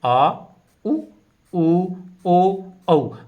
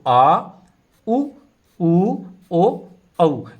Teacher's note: उच्चारण के समय जीभ का पीछे का भाग ऊपर उठता है तो उन्हें हम पश्च स्वर के नाम से जानते हैं ये